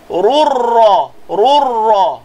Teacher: Ru tanwin bertemu ra, jadi idgham tanpa gunnah.